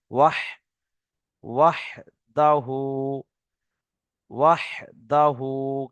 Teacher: বড় হা কণ্ঠনালীর মাঝখান হতে হা উচ্চারিত হয়, সেজন্য ওয়াও হা জাবার ওয়াহ।